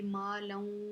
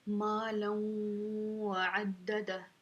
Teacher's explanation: ہم تھوڑی سی یہاں پہ نون کی آواز نکالیں گے، ما لوں، ٹھیک ہے، غنے کی طرح تھوڑی سی ہم نے آواز نکالنی ہے، ٹھیک ہے، ما لوں وعددہ، ٹھیک ہے، یہاں پہ کیا ہو رہا ہے؟ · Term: ادغام